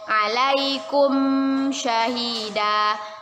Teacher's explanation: Mim sukun bertemu dengan huruf sya, yaitu izhar syafawi. Kita baca jelas dari bibir.